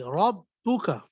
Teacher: با میں ذرا سختی سے پڑھیں گے اس لیے کہ شد آ رہی ہے